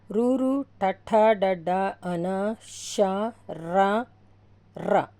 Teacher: మూర్ధన్యములు అంటే అంగిలి పై భాగం నుండి పుట్టినవి